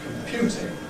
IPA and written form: kəmˈpjuːtɪŋ (computing)